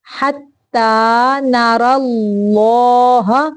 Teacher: اللہ کا لام موٹا پڑھیں گے اور را کو بھی موٹا پڑھیں گے